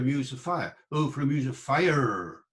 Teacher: We don't know exactly. I did it with a retroflex R, the R curled back, like you get in the West Country. But it might have been a trilled R.